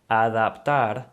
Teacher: the A sound doesn't change throughout the word. It's always going to be that A sound.